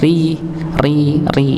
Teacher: Jadi kalau huruf ro dia berharakat kasrah Nggih maka dia dibaca tipis